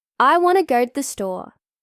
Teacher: The important words want, go, store, get more stress. The small words like to and the become short and quiet. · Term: stress and rhythm